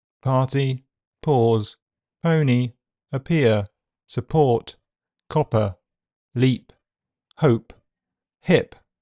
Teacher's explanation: P is normally aspirated, which is a puff of air as the sound is released. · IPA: [pʰ], /p/